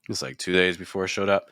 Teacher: I would just drop a little bit lower in pitch. That way we're not linking it too much with days. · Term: lower pitch